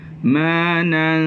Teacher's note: Oleh kerana nun itu nak masuk pada sin pula adalah merupakan huruf istifal infitah. Dia istifal infitah, maka dengung akan jadi nipis. Jadi bunyinya manan.